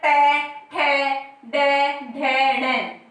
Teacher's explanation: हमारे दांतों के जस्ट नीचे का जो भाग होता है, दांतों के बिल्कुल नीचे जो भाग होता है, वहां पर जब हम इनका उच्चारण करते हैं तो हमारी जीभ जो है स्पर्श करती है। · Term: मूर्धा